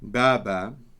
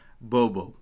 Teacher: this entire long a sound becomes an o